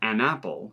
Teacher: The two vowel sounds are separated out. English speakers don't like to do that.